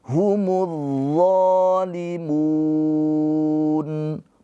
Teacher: Di sini alif lamnya alif lam syamsiyah. Jadi mu langsung ke d alif lamnya dilewati.